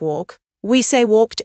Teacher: For regular verbs that end in voiceless sounds like walk, we say walked as t.